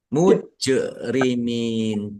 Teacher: Jim sukun bacaan qalqalah dibaca memantul ditampakkan pantulannya